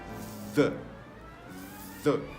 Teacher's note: we need to place the tip of the tongue between the teeth and make a voiced sound